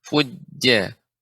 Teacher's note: Jim pengucapannya tengah lidah